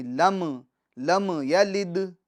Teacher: ہم نے میم ساکن کے سکون میں جنبش بھی نہیں دینی، یعنی آواز نہیں لوٹانی